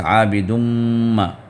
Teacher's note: میم پر شدہ آ گیا تو اس میم کو غنہ کریں گے